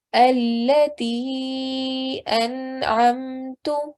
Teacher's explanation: I stretched the sound out of the ta for 3 to 5 seconds because it's a mad saghir